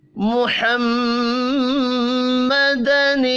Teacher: محمدن، میم مشدد پر غنہ کریں گے اور یہاں دیکھیں نون کے نیچے زیر ہے، محمد نل ہوگا، لام ساکن پر قلقلہ نہیں کرنا۔